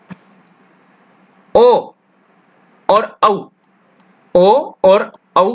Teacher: अगला है ओ दौतोः कंठोष्ठम, ध्यान से देखिए, ओ दौतोः कंठोष्ठम, ओ और औ, ओ और औ का उच्चारण स्थान जो है कंठोष्ठ होता है।